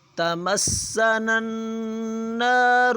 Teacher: را کے اوپر پیش ہے، را کو پر پڑھا جائے گا، موٹا پڑھا جائے گا